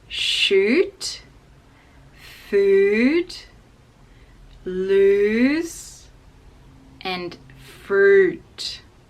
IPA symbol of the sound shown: u: